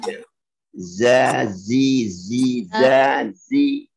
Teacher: Za itu lembut, za di ujung lidah